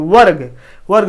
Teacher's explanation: वा पढ़ते फिर अधूरा रा तेजी के साथ पढ़ते हैं